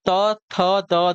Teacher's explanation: त थ द ध आपके दंत कहलाएंगे